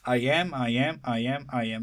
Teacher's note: pattern is unstressed followed by stressed unstressed stressed it goes like that valley and crest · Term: amic pentameter